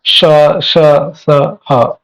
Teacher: जो उष्म वर्ण है, इनका जब उच्चारण करते हैं तो जीवा जो है उसके उच्चारण स्थान से थोड़ा सा दूर रहता है ना, सामान्य स्तर से थोड़ा सा दूर रहता है ना।